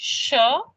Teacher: There is, as the tongue is touching the post-alveolar ridge, sh, it sort of partially releases the air, then the tongue moves and the rest of the air releases